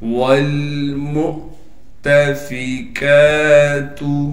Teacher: دیکھیں واو لکھا ہوا ہے لیکن واو کے اوپر چھوٹا سا حمزہ بنا ہوا ہے، پھر ہم اس واو کو نہیں پڑھیں گے بلکہ اس حمزہ کو پڑھیں گے، اور حمزہ جب ساکن ہو تو پھر حمزہ کو تھوڑا سا جھٹکے کے ساتھ پڑھا جاتا ہے۔ تا کو باریک کر کے پڑھیں گے، فا باریک پڑھا جائے گا، کاف پر کڑا زبر ہونے کی وجہ سے کاف کو ایک الف کی مقدار کھینچیں گے اور کاف کو باریک کر کے پڑھنا ہے۔